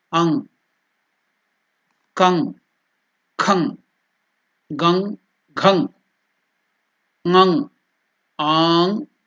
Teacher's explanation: That G also should not come. It goes to the nasal. The sound goes to the nose and stops there.